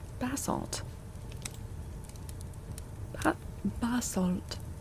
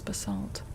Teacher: the British pronunciation puts the emphasis on the first syllable